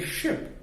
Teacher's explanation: when I say ship, the tongue goes to the middle maybe of the alveolar ridge, the bulge behind your teeth, and maybe spreads a little bit.